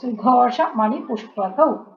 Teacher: സു ആണ്, സായാണ്, ഷു അല്ല കേട്ടോ